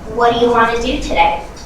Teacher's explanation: notice how what do you became what you and want to became one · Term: wanna